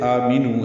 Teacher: آ مد بدل ہے، میم کے نیچے یہاں پہ زیر ہے، نو واو مدہ ہے، 2 حرکات لمبا کریں گے۔